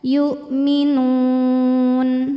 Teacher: Maka nunnya ini panjang boleh dua atau empat atau enam harakat asal konsisten dalam sekali baca. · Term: mad arid lukun